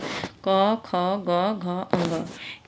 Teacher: क वर्ग में क, ख, ग, घ, अंग, इसकी जो है उच्चारण कहाँ से होती है? कंठ से होती है